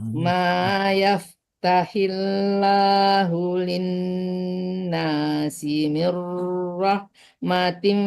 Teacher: Doang ditipiskan lam Allahnya karena sebelum lam Allah dia berharakat kasrah, dan tipiskan lam Allahnya